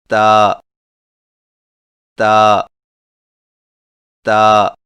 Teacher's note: تا کی ادائیگی میں زبان کی نوک کو سامنے والے اوپر کے دو دانتوں کی جڑ سے لگا کر باریک آواز میں پڑھیں